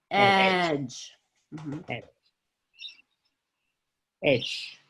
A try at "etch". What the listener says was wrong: Yeah, and you didn't quite make a CH in etch. It sounded a little like an SH. So etch with a CH.